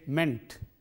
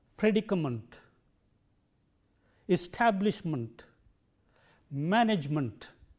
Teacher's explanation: People go by the spelling and say ment. Actually, the vowel sound here is munt, not ment, but munt.